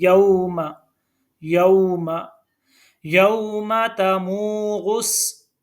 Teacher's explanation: यौमा नहीं पढ़ना, यौमा तमूरुस नहीं, ये गलत है, ये बिल्कुल भी ठीक नहीं है क्योंकि मीम के ऊपर ज़बर है और हमने ज़बर पढ़नी है, खड़ी ज़बर नहीं पढ़नी